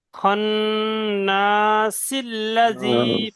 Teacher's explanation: যখন এখানে থামবো তখন সিন সাকিন হয়ে যাচ্ছে। আর যখন থামবো না, তখন এই সিনের জেরটা লামের সঙ্গে যুক্ত হয়ে পড়তে হবে। খন্নাসিল্লাজি পড়তে হবে।